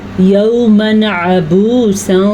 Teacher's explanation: یہاں پہ حروف ہلکی میں سے عین ہے تو یہاں پہ ہم تنوین کو ظاہر کر کے پڑھیں گے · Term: اظہار کا قاعدہ